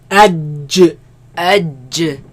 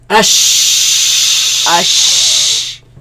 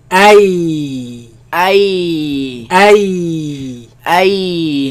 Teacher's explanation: They come from the middle of the tongue against the middle of the upper palate.